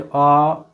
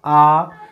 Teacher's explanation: जो अ की अपेक्षा आ में ज्यादा समय लगता है